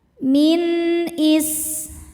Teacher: sin-nya berdesis ya. Salah satu sifat dari sin adalah shofir. Ada desis seperti ular.